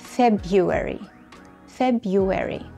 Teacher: شيلوا الار، اعتبروها غير موجوده واقرأوا February